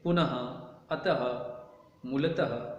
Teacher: विसर्ग का उच्चारण आधे ह की भांति होता है।